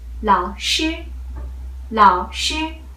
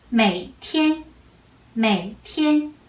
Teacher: So I just read third tone very short.